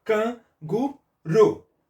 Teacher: a última sílaba é a sílaba tônica é a sílaba mais forte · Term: oxítona